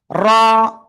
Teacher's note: জিব্বার আগার পিঠ তার বরাবর উপরে তালুর সাথে লাগিয়ে মোটা আওয়াজে উচ্চারণ করব।